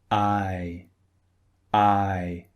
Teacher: the mouth is open and then it closes very very slightly